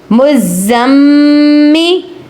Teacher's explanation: زا اور میم کو ہم ذرا رک کر سختی سے ادا کر رہے ہیں